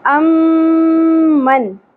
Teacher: غنہ کرنا ہے میم مشدد پہ، ٹھیک ہے۔ اس آواز کو ہم نے ناک میں ٹھہرانا ہے، اس طرح کھینچنا ہے۔